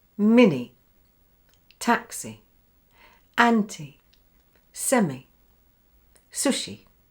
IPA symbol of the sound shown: i